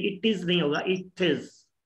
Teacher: अब टी जो है इसके साथ टिज बन जाएगा